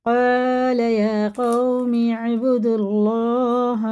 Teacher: یہ اللہ کا لام جب پیش کے ساتھ ہوتا ہے تو پر ہوتا ہے